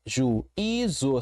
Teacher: Percebi que tem que temos uma trsílaba, uma palavra com três sílabas. E a sílaba tônica é a do meio, é a penúltima sílaba.